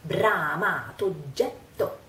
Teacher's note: The two words become one and we pronounce just one O. So, bramato oggetto.